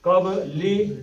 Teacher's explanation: اس میں با کا کلکلہ ہے